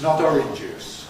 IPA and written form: ˈɒrɪn ʤuːs (orange juice)